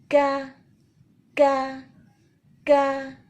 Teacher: سب سے اہم کیا بات ہے کہ مخرج درست ہو اور اس کے اندر جو صفت موجود ہے اس کو صحیح طور پہ ادا کرنا۔ پہلے شدہ کی صفت ہے اس کے اندر اور پھر ہے ہمس کی صفت، دونوں اس کا لازمی حصہ ہے، ان کو ہم جدا نہیں کر سکتے، لیکن ہم زبردستی پہلے ہی اتنا فورسفلی ہمس کو لانے کی کوشش نہیں کریں گے کہ اس کی صفت شدت کو بالکل ہی ختم کر کے رکھتے ہیں۔